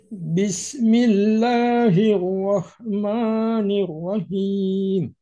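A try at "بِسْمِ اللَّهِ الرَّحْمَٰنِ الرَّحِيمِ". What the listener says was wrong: Nah, masih ada him. Coba Ibu, Bapak tutup hidungnya. Buka hidungnya ketika him. Ketika him tutup buka. Tutup buka. Nanti ketahuan. Ketika panjangnya nah, akan ada suara seperti itu. Nah, jadi suaranya murni keluar dari dari rongga mulut kita.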